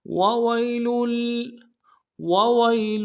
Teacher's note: یا لین بغیر کھینچے پڑیں گے